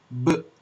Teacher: hand against your Adam's apple and you pronounce the sound B you will feel a vibration that means your vocal cords are vibrating